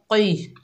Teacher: क़ौफ के नीचे ज़ेर है, बगैर खींचे पढ़ेंगे। क़ौफ मोटा हरूफ है, हरूफ इस्ताला में से है, मोटा अदा होगा